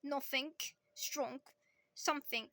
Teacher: They tend to end it with a K sound and not a gerund.